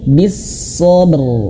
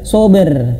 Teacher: Kemudian juga sama di sini bis-sabr, ro-nya tebalkan. Jangan hanya sekadar sober, tapi bis-sabr.